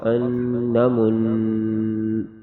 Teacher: وقف میں غنہ کر کے آواز ختم ہو جائے گی